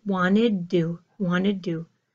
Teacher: The D at the end of wanted pulls this two to make it a double D sound